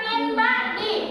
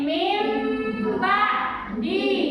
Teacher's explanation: Hukum tajwidnya iqlab, maka huruf nun menjadi apa? Mim. · jika nun disukun atau tanwin ya bertemu dengan huruf ba, maka nun suara nun teh menjadi suara mim